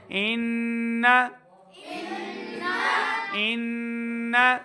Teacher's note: نون کے اوپر تشدید کی علامت ہے، غنہ کریں گے. إن إن نون کی آواز کو لمبا نہیں کرنا.